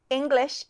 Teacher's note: English has two short I sounds on both syllables